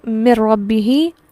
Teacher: پہلے میں نون ساکن ہے، وہ اس طرح سے شامل ہوا کہ اب وہ پڑھنے میں بالکل بھی نہیں ہے، میم ڈائریکٹ را سے ملتا ہے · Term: تام